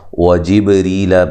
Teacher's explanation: با پہ قلقلہ کرنا ہے